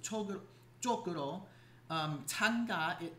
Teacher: you have this double j at the beginning of a word, so chokuro, tanga, it's aspirated.